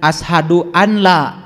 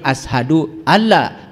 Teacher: Kalau idgham berarti nun mati ketemu ya masuk. Nun mati ketemu lam masuk. Jangan ashadu an la, tapi ashadu alla walaupun di situ ada nun.